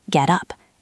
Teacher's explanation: The T sounds a bit like a D in American English or a crisp T in British English.